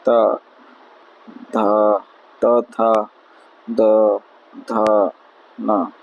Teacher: जिन व्यंजनों के उच्चारण में जीवा नोक ऊपरी दांतों को स्पर्श करते हुए दंत व्यंजन कहलाते हैं